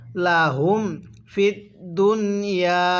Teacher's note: এই নুন সাকিনটা স্পষ্ট করে পড়বো